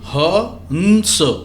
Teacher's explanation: ह की ध्वनि समाप्त हो गई, उसके बाद बिंदी की ध्वनि आई आधा न की, हाँ, फिर स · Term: अनुस्वार